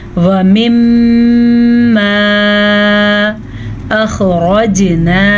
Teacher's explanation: را زبر کی وجہ سے پر پڑھی جائے گی، جبکہ جیم پہ ساکن ہے تو جھٹکا ہوگا، اسے قلقلہ کہتے ہیں